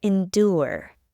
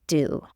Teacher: in the word endure du is part of the stressed syllable endure and is pronounced as do